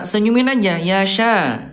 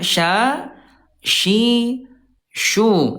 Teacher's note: Huruf syin dia tidak monyong, tidak muncung ya ketika lagi fathah ya. Nih Bunda huruf syin dia alistiffal turun pangkal lidahnya nih ya.